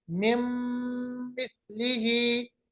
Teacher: अब मीम हर्फ को देखेंगे, अगर नून साकिन या तनवीन के बाद मीम आ गया कैसे पढ़ेंगे, लिखा था मिन मिथलिही मगर पढ़ेंगे मिम मिथलिही, नून साकिन को मीम के साथ मिलाएंगे, आवाज नाक के बांसे में चली जाएगी तो इदगाम बागुन्ना कहलाएगा, मिम मिथलिही, मिम मिथलिही।